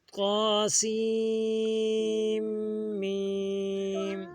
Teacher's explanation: میم پہ ہم نے غنہ بھی کرنا ہے اور مد بھی کرنا ہے